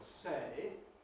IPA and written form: seɪ (say)